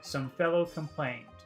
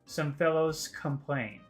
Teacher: the S and the K kind of come together